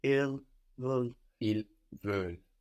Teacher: We have V-E-U-L-E-N-T. The E-N-T on the end of verbs isn't pronounced, no? But it does make us hear that L.